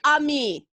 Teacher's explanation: accent on the second syllable